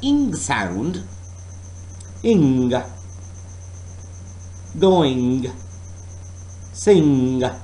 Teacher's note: oral passage is blocked by pressing the back of your tongue against the soft palate.